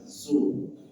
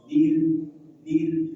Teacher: Ingat, ra yang pertama dibaca tebal, su. Ra terakhir dibaca tipis, dir, dir.